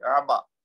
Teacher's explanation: آبا نہیں کہنا اس کو، یعنی حمزہ کی آواز نہ نکلے، عین کی نکلے